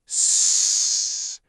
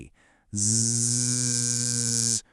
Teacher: You feel that vibration? That buzz is voicing.